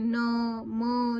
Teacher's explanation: ये नासिकीय व्यंजन होते हैं क्योंकि ये नाक से बोले जाते हैं